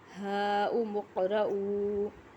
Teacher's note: ہاؤم اقرءوا، یہاں بھی الف مدہ اور حمزہ ایک کلمے میں ہیں تو کیا کون سی مد ہوگی یہاں، مد منتصل، تو مد منتصل کو 3 الف کے برابر کھینچ کے پڑھا جاتا ہے